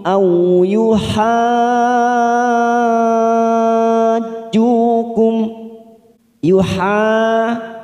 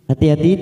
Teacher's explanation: Hati-hati di sini ada bacaan mat lazim ilmi mutsyaqal, yaitu bertemunya huruf yang bertasdid, yaitu bertemunya mat dengan huruf yang bertasdid. Yuha ini kita panjangkan 6 harokat atau 6 ketuk. Yuhaju ujungnya kita masukkan pada huruf jim karena ada huruf yang bertasdid yaitu huruf jim.